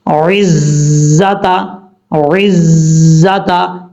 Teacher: عین کے بعد جو زا ہے یہ زا سیٹی کے ساتھ پڑھا جائے گا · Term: سیٹی کی آواز